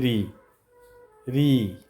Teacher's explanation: ऋ बोलने पर क्या आ रहा है? मूर्धा आ रहा है।